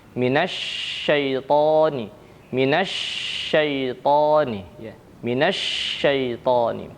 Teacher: Shin memiliki sifat tafashiih yaitu menyebarnya ya angin di dalam mulut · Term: sifat tafasyi